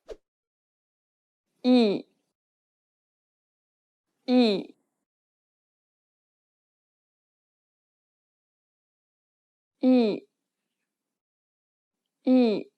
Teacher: The next vowel is 이, open your mouth as if you were trying to show your teeth and say the letter E. Say it like the E in meat, but shorter.